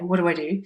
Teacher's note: What do I do? So that's the fast version with the T missing on what, and then a link between do and I.